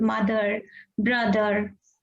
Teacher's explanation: And O is giving schwa sound many a times, like in the word mother, brother.